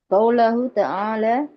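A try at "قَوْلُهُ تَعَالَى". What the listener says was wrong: Qawlu. لماذا فتحة؟ نبدأ بالضمة.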